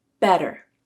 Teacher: Better used a flap.